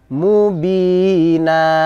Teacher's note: fathah panjang Karena kalau kita baca apa adanya menjadi pendek Mubin karena kita baca waqaf maka berubah tanwinnya menjadi Mad yaitu namanya Mad iwad mengganti tanwin menjadi fathah